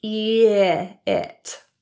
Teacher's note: The I in the word it is pronounced as I, with a lower tongue position than E. E. Pull the middle of your tongue down from that E position, eat, to get this sound.